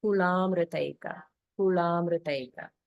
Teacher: So this is kula plus amruta plus eka. So in the word amruta, it's an R vowel. It's not the R consonant. So there's no, so the mru is not a conjunct syllable.